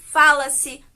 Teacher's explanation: Por exemplo, fala-se é um verbo mais a partícula C, que está no tempo presente e que a sílaba tônica dele, né, a sílaba pronunciada de maneira mais forte, é a sílaba Fá